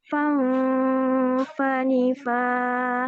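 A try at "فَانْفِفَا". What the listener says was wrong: Jangan mafifang. Bukan fang. Ya, jadi ingat kita niatnya ke N ya. Bukan ke eng. Nggak boleh eng. Tapi nanti ngikutin makhraj huruf fa. Cuman itu aja, nanti latihannya ikhfa-nya biar lebih baik lagi.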